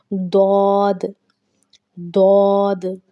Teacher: حروف حافیہ میں صرف ضاد شامل ہے۔ ضاد زبان کی کروٹ اور اوپر کی داڑھوں کی جڑ سے ادا ہوتا ہے